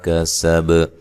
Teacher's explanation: کسب کاف کو سین کو باریک پڑھنا ہے، با پہ قلقلہ کرنا ہے وقف کی صورت میں، با کو ہلا کر پڑھنا ہے